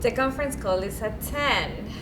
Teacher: we step up we jump up we skip over some notes and we say the conference call is that ted and then we do something called gliding we glide back down